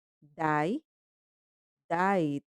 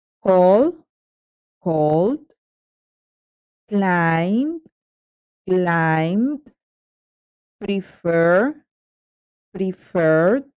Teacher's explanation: Ese último sonido, esa ed, va a sonar como una D